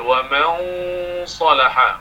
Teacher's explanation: إخفاء nun bertemu dengan sad isti'la, maka bunyi ikhfa juga tebal.